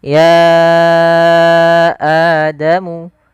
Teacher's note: ya panjangkan dulu ya-nya sepanjang 4 atau 5 harakat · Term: mad jaiz munfasil